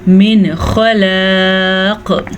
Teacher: वक्फ़ किया हमने तो क़ाफ साकिन हो जाएगा। जब क़ाफ साकिन होगा तो कलकला पैदा होगा।